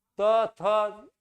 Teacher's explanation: त थ दंत से होता है।